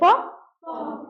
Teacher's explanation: प बोलते हैं तो इसमें जीभ का कोई रोल नहीं है, प बोलते हैं तो ओष्ठ का काम है, ओष्ठ पापा बोलते हैं, जैसे पापा, तो ओष्ठ यानी प का उच्चारण स्थान क्या हो गया, ओष्ठ।